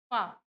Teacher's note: पा बोलने से अपने आप आपके होठ जो है वो बंद हो जाते हैं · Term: ओष्ठ